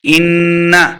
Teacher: ان نون مشددہ غنہ کرنا ہے